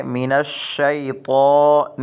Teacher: اس تا کو اگر باریک پڑھ دیا تو یہ غلط ہو جائے گا، بلکہ اس تا کو موٹا پڑھنا ہے